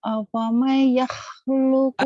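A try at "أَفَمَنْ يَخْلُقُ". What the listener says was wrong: Afamay idgham biguna ditahan. Afamai yakhluqu kaman la yakhluq. Yakhluq ya. kurang ngorok tuh, yakhluq.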